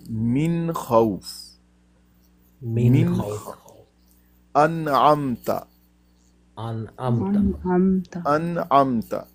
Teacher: نون ساکن یا تنوین کے نون کو ظاہر کر کے پڑھتے ہیں، یعنی اس کا اظہار کرتے ہیں، دیر نہیں لگاتے پڑھتے وقت، اور خوب ظاہر کر کے پڑھتے ہیں. اس کو کہتے ہیں اظہار.